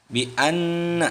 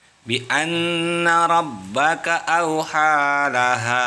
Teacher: Nah, itu nun yang disebut dengan gunnah. Bi anna, nun bertasdid. Nah, itu yang disebut dengan gunnah.